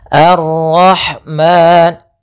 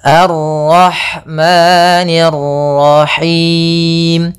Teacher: Ma ada mad tabi'i, yaitu fathah bertemu alif, panjangnya 2 harokat.